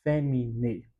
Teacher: na pronúncia eclesiástica nós não pronunciamos o a nessa junção de a, então somente pronunciamos o e